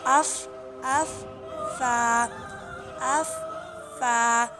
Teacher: اس میں ہونٹوں کا استعمال زیادہ ہوتا ہے، کیسے کہ اوپر کے اگلے 2 دانتوں کی نوک جب نیچے کے ہونٹ کے اگلے والے حصے سے لگے تو ادا ہوتا ہے فا،